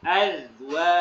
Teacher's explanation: Nah ini jadi ketukar dal sama za yang dikolkolahkan, dipantulkan hanya huruf dal. Huruf za yang ada titiknya dia tidak dipantulkan